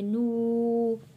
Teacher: یہاں پہ نو واو ساکن سے پہلے پیش ہے، حروف مدہ ہے، اس لیے ایک الف کے برابر کھینچ کر پڑھیں گے۔